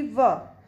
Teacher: अब दंतोष्ठ में देखेंगे, जिसमें दांत और ओंठ इन दोनों का प्रयोग होगा, जैसे कि व, जिन व्यंजनों के उच्चारण में निचला ओंठ दांतों को स्पर्श करता है वो दंतोष्ठ व्यंजन कहलाते हैं